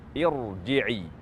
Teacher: huruf ra bersukun terletak di setelah huruf hamzah wasal, maka dibaca tafkhim